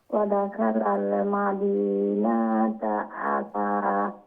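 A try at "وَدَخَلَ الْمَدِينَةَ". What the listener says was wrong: আবার নুন লং হয়ে গেছে। জি, মাদিনাতা।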